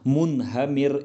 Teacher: را ساکن سے پہلے زیر آئی ہے تو را ساکن کو باریک پڑھا جائے گا